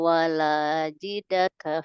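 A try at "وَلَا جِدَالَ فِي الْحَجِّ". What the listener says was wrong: La. Tadi terdengar seperti tak ya? Jidala. Tadi Umi menyebutnya wala jidaka.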